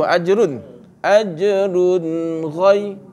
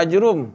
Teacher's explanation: Tanwin bertemu dengan ghain. Maka dia dibaca jelas tanpa dengung.